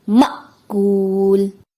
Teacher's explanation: حمزہ کے اوپر جب بھی جزم آتا ہے جھٹکا دیا جاتا ہے، لیکن یہاں پہ جھٹکا نہیں دیا جاتا جو کہ غلطی ہے، درست ادائیگی ہے مأکول۔